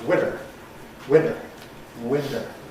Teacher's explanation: So you get voicing of the /t/ in a word like <winter>.